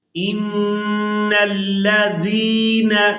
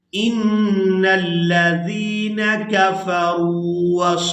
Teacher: نون مشدد پر غنہ کریں گے، زال کو یائے مدہ کے ساتھ ملاتے ہوئے کھینچ کر ادا کریں گے۔